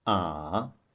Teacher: The third tone, a, it starts around the middle pitch, goes down to the low pitch, then rises back to the middle pitch, but a bit higher than the beginning. We call it the falling rising tone.